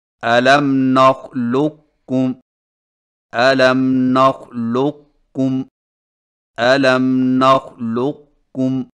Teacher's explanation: دوسرا طریقہ یہ ہے کہ قاف کے موٹا پن کو ظاہر کرنے کے فوراً بعد کاف باریک ادا کریں، یعنی اس طرح الم نخلقکم الم نخلقکم الم نخلقکم۔